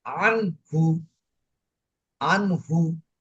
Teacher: হা, হা এই যে নুন সাকিনের পরে যদি হা আসে, তাহলে এই নুন নুন সাকিনকে কি করতে হবে, পরিষ্কার করে পড়তে হবে। আন পরিষ্কার করে পড়তে হবে, গুণনা হবে না। গুণ্য হবে না, সরেয়া দন্তান্ন হসন্ত, তারপরে হু, আন হু, আন হু। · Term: ইজহার